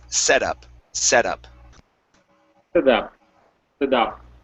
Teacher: Okay, let's go to the word setup. Okay, so treat this T right here as a flap T or a D sound. So instead of setup, it's setup.